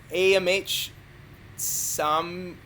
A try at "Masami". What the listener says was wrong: Masami. I think the A is silent. Masami.